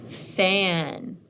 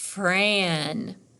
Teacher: we have 2 consonants that we blend together and we hear each sound from those consonants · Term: consonant blend